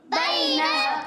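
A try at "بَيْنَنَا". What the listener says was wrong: اچھا سختی نہیں دکھانی بئی حرف لین نرمی سے بئی کیا پڑھیں گے نون زبر نا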